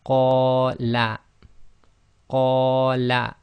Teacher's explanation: So that's 2 long on the qa, and la is 1 long.